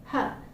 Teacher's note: It is H, H. It is a voiceless glottal fricative. · It's a voiceless consonant. It is a glottal fricative, and you can hear that friction, okay, the friction sound. And the main articulator is the glottis. · Okay, it is not the vocal cords which is vibrating, but the glottis is the main articulator, and that's why it is called the glottal fricative. And the air is actually passing through the glottis and got emitted through the mouth